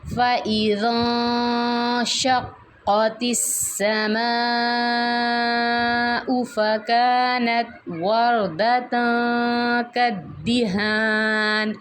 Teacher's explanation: را کو موٹا پڑھیں گے کیونکہ را ساکن ہے، اس کے اوپر کوئی حرکت نہیں ہے تو ہم نے پچھلا حرف دیکھنا ہے، اس کے اوپر اگر زبر ہے تو پھر ہم نے اس کو را کو موٹا پڑھنا ہے.